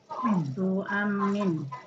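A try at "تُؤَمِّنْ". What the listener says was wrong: Nah, pakai tasydid ya.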